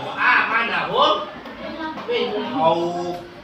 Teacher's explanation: Idgham misli dibaca gunnah atau berdengung. Idgham misli apabila ada hukum mim sukun bertemu dengan huruf mim.